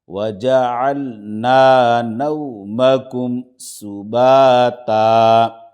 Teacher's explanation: وجعلنا نو، میم زبر ما، کاف میم پیش کم، نومکم، سین پیش سو، با الف زبر با، صوبا، تا 2 زبر تن، صوباتن۔ آگے آیت 2 زبر پر وقف، ایک زبر کے ساتھ الف پڑھا جائے گا